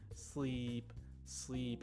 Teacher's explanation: sleep, as you can hear, has a longer, deeper E sound